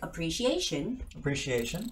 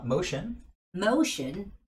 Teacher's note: right in front of tion, there is a stress.